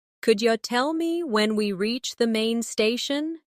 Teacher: Notice how could you becomes could ya.